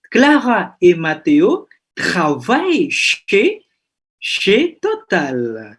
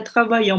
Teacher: Donc, ENT-nya nggak diucapkan ya.